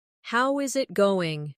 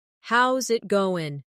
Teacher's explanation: The is disappears, and the final G in going often softens. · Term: connected speech